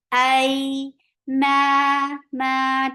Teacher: Hamza is very sharp. Ya is very soft. And make it 2 counts long because this is lean.